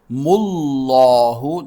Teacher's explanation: لفظ اللہ کا دوسرا لام موٹا ہوگا